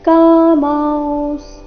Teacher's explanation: ಅನುಸ್ವಾರದ ಉಚ್ಚಾರಣೆ ನಾಸಿಕ ರೀತಿ ಮತ್ತೆ ಸ ಪೂರ್ತಿ ಇಲ್ಲ